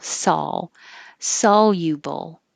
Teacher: sol is ah. So you have to open a lot and then put your tongue back up for the L.